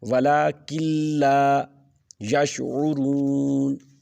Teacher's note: نون کو پڑھنا ہی نہیں ہے، کاف کو لام کے ساتھ ڈائریکٹ ملا دیں · کے ہے، کیوں؟ حروف یرملون میں سے لام آ گیا ہے، لام اور را ایسے حروف ہیں جہاں پر ادغام بلا غنہ ہونا ہے، یعنی اس میں غنے کی آواز ہی نہیں آنی